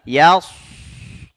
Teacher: menaikkan lidah belakang ke langit-langit. Ya, dia punya sifat itbaq. Jadi menutup celah keluarnya angin sehingga udara mengalir di sampingnya. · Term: huruf sad